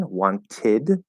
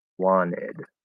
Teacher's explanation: we can apply the nt plus vowel connection rule where the t disappears